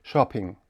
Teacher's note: вимовляється тільки один звук п